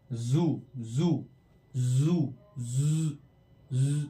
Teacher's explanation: vibration feel होगा आपको जब इसको बोलेंगे ज